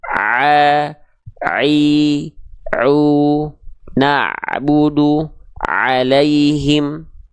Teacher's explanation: huruf ain tepat dilafalkan dari bagian organ katup epiglotis yang ada di tengah tenggorokan, maka bunyinya insya Allah akan seperti ini.